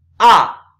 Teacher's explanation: Fourth tone is going down. Fourth tone is a short and powerful tone.